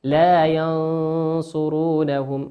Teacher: وقوله لا ينصرونهم النون ساكنة في كلمة ينصرونهم أتى بعدها حرف الصاد، والصاد من حروف الإخفاء